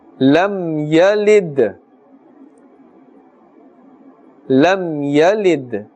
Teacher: Dal is part of the huruf qalqala, and therefore we are echoing and bouncing that sound. After the mim sakin is a ya, so idhar shafawi is taking place, and therefore no ghunna is taking place.